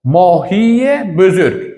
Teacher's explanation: cho'ziq unli i bilan tugaganligi uchun aytganimizdek, yozuvda emas, balki faqat talaffuzda bitta ye tovushi orttiriladi